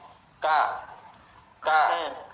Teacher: kalau ka pangkal lidah sedikit di bawah makhraj ko. Ka di bawah sedikit. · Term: makhraj huruf kaf